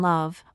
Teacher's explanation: a light L as in love where the tongue touches the top of your mouth gently